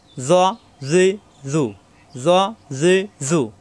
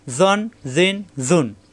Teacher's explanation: তানবিন আসলে জন জান হবে না, জন জিন জুন, জন জিন জুন। মোটা হবে কিন্তু জিব্বার আগা দাঁতের আগায়